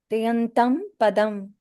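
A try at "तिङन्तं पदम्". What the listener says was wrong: Okay, good. Okay, very good.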